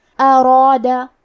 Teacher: ہمیں حرف را کو اور اس کے بعد مد الف کو دونوں کو تفخیم سے مطلب بھاری آواز میں ادا کرنا ہے۔